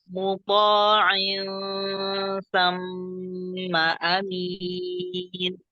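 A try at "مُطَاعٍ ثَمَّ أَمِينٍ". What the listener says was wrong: Tipiskan ikhfa. Muta'in. Bukan il. Nah, jadi tidak ada suara yang mengumpul antara lidah dengan langit-langit, bukan il, tapi insa. Insa.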